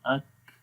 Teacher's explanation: ठीक है, और जब हम उसको रिलीज़ करेंगे, छोड़ेंगे, तो फिर आएगी अक, तो ये महमूसा यानी सांस फिर आखिर में जारी हो जाएगा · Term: शिद्दत